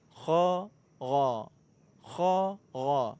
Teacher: Huruf ghain itu ada di ujung kerongkongan.